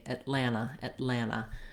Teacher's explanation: i just move right into the final a which is a schwa sound and sounds like ah so thinking about it like lana rather than atlanta um yes